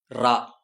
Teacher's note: நாவின் நுனி மேல் அண்ணத்தின் மையப்பகுதியை உரசுவதால் ரகரம் தோன்றுகிறது இது வல்லின எழுத்து என்பதால் இதற்கு வல்லின ரகரம் வல்லின ரகரம் என்று பெயர் உண்டு.